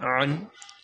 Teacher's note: حلق کے درمیان والے حصے سے ادا ہوگا حرف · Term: حروف حلقیہ